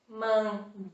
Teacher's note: a sílaba tônica aquela mais forte é a penúltima sílaba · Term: palavra paroxítona